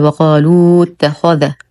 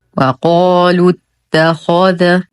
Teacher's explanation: همزه الوصل تحذف في درج الكلام والالف فارقه لا تنطق